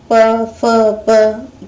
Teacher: ये जो प वर्ण हैं, उनको बोलने में ओष्ठ, होठों की मदद लेनी पड़ती है, इसलिए ये ओष्ठ कहलाते हैं वर्ण।